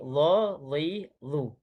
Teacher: Okey, baik Jadi akhir sekali dha, dhi, dhu. Jadi pastikan sebutannya tebal dan juga hujung lidah tu dikeluarkan antara gigi atas dan juga gigi bawah.